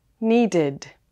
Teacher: Need ends with the D sound, so the ED is pronounced as id.